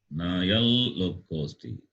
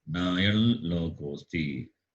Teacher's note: Anuswara will be replaced by the Anunasika of the Lakara. So Anunasika of Lakara is La. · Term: nasalized Lakara